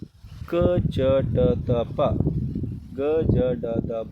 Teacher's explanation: ಕಡಿಮೆ ಉಸಿರು ಕೊಟ್ಟು ಉಚ್ಚರಿಸಲಾಗುವಂತಹ ವ್ಯಂಜನಗಳನ್ನ ಅಲ್ಪಪ್ರಾಣಾಕ್ಷರಗಳು ಅಂತ ಕರೀತೀವಿ